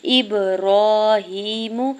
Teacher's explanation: حمزہ کی زیر کو با ساکن کے ساتھ ملاتے ہوئے با ساکن پہ قلقلہ کریں گے